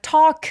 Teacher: 턱 길게 발음하고요. L 발음은 내지 않습니다. talk의 크리가 and의 모험 소리와 만나서 약간 된 소리를 내면서 힘을 쭉 빼 주세요.